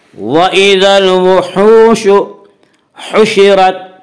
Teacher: ہا کو ظاہر کر کے پڑھیں گے، ہا کا مخرج وسط حلق یعنی حلق کا درمیانی حصہ، ہا حشرت، حشرت کی را کو پر پڑھا جائے گا۔